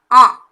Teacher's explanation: மேலே இந்த சந்திரபிந்து இல்லாமல் எழுதணும்னா ஆ சொல்லுவோம். சந்திரபிந்து போடுறோன்னா ஆ, அந்த மூக்கால் ப்ரொனவுன்ஸ் பண்ணுறது தான் அனுநாசிக். அந்த உச்சரிப்பு மூக்கு வழியாக ப்ரொனவுன்ஸ் பண்ணுற மாதிரி இருக்கணும்.